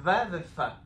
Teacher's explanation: זה בעצם חוכך דו שפתי